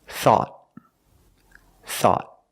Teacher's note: at the end the tongue goes up and makes a stop te